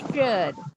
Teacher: Miss kasih lihat bunyinya monyong ya bunyi SY-nya